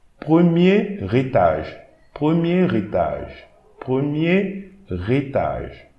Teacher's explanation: I'm reading this whole word, the first word, like a single word. And I'm going to add an R to the next word.